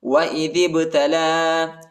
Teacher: وَإِذِ ابْتَلَى، ذال کو با کے ساتھ ملائیں گے، الف نہیں پڑھا جاتا، الف کے اوپر حرکت نہیں ہے، ٹھیک ہے، اور لام پر کھڑا زبر اور چھوٹا مد ہے، اس کو تقریباً 2-3 سیکنڈ تک کھینچیں گے، یا نہیں پڑھا جاتا، یا کے اوپر حرکت نہیں ہے۔